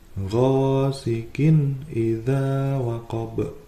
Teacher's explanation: ada tanwin bertemu dengan alif, itu hukum bacanya adalah idhar, dibaca jelas tanpa mendengung